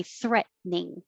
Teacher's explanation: the t is going to disappear no matter what but you can make it even shorter and say threatening once